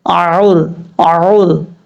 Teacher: یہاں پر عین کو اپنے مخرج سے ادا کرنا ہے، اعور اعور۔ عین کے بعد جو را ہے یہ را پر پڑھا جائے گا، یعنی موٹا فل ماؤتھ پڑھا جائے گا۔ را ساکن سے پہلے پیش ہو تو را پر پڑھا جاتا ہے، یہ پر حالتوں میں سے ہے۔